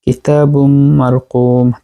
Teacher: তানবিনের পরে মিম আসছে ইদগামে মাল গুন্না।